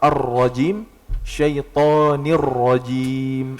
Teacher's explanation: Ar-rajim sedikit ada getaran, kenapa? Karena huruf ra-nya udah double di situ. Udah ada tasydidnya gitu.